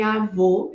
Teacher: Se você observar, por exemplo, o fonema O e a realização diferente em cada uma dessas palavras, vai perceber, bom, eu tenho um O, mas em avô eu falo o mesmo, um O fechado no português